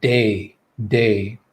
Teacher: try that and if you place your hand on your neck with the d sound where your voice is working you're going to feel a vibration you're going to feel your voice actually working okay so all